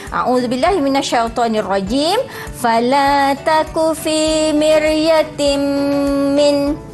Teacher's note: ra sakinah, sebelumnya berbaris kasrah dan dia memang dibaca secara tarqiq sahaja.